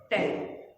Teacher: सबसे पहले तो जीव इसमें एकदम से टकराई और वापस अपनी सही जगह पर आ गई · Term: मूर्धन्य